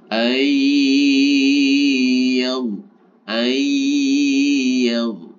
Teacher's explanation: Idgham itu artinya masuk, bi itu dengan, gunnah itu dengung. Artinya nun sukunnya ini dimasukkan ke dalam hurufnya, kemudian disertai dengan dengung. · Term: idgham bi gunnah